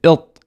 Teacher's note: you can hear the thickness in my sound because I'm raising the back of the tongue